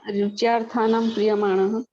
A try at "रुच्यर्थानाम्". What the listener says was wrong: हाँ, रुच्यर्थानाम प्रिय, रुच्यर्थानाम है, रुच्यार्थानाम नहीं है, हाँ, रुच्यर्थानाम है, ठीक है ना।